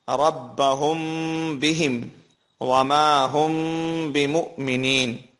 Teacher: number 2، اخفا شفوی، میم ساکن کے بعد با آ جائے تو غنے کے ساتھ اخفا ہوگا